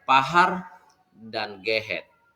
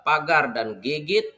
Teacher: bunyi H dalam bahasa Sumbawa, dialek Tongo pada posisi antar vokal, itu adalah akibat dari perubahan bunyi G dalam bahasa Sumbawa Purba. Misalnya untuk menyatakan makna pagar dan gigit, bahasa Sumbawa Purbanya itu adalah pagar dan gigit, sedangkan dalam bahasa Sumbawa dialek Tongonya itu adalah pahar dan gehet.